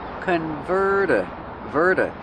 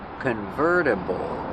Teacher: use a fast D the T changes to a fast D